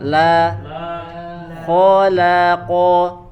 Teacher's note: Ya, kemudian kho dan qafnya ya, kho dan qafnya dia tebal, la-nya tapi dengan dibaca tipis. Khola, la-nya tipis dulu, coba.